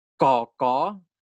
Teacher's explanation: the root of your tongue is blocking the airflow is touching the soft palate over here of your throat so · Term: stops